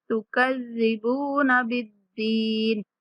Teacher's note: با کے بعد واو مدہ کھینچ کے پڑھیں گے۔ تکذبون بالدین، دال مشدد اور اس کے بعد یا مدہ دال کھینچ کے پڑھیں گے۔